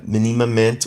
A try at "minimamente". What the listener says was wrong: Minimamente. Minimamente. Minimamente. Como são vários is, há sempre aquela vontade em inglês de fazer um a É minimamente. São sempre i. Mas há aquela vontade de quem fala inglês de fazer um ma, não é? Manamamente.